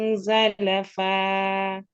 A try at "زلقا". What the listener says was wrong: زلقا. This is قاف.